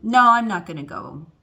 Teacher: but if it's a statement okay um no i'm not gonna go it goes down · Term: intonation